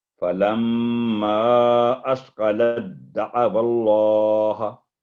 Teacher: اس میں جو تا ساکن ہے وہ بالکل سائلنٹ ہو جائے گا، دال کی آواز آئے گی تشدید کی